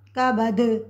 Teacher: دال حروف قلقلہ میں سے ہے تو یہاں پہ ہم وقف کی صورت میں قلقلہ کریں گے